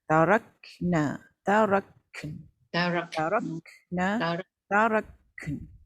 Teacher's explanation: sebab huruf kaf ni dia ada angin. Bila ada angin, nak lepaskan angin, mungkin kadang terlambat pula nak masuk nun. Itu satu masalah huruf kaf ni. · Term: huruf berangin